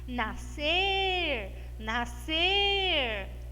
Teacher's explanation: eu parei mais tempo no meu nascer, temos uma palavra oxítona aqui